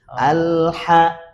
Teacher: diamin dulu lamnya di makhrajnya. Ketika ngucapin ha baru lepas. Baru lepas alha.